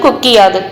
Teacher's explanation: உகரம் வந்து இகரமாக மாறும் அப்படி மாறுறப்போ அதற்கான மாத்திரை அளவில் இருந்து குறைந்து ஒலிக்கும் குறைந்து ஒலிக்கிறது தான் குற்றிய இகரம் எக்ஸாம்பிள் கொடுத்திருக்காங்க பாருங்க கொக்கு கூட்டல் யாது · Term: குற்றியல் இகரம்